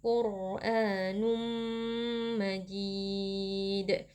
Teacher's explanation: ada tanwin yang bertemu dengan huruf mim hukumnya adalah Idam bunah tanwin kita masukkan ke dalam huruf mim lalu dibaca dengan dengung yang dipanjangkan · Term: idgham bi gunnah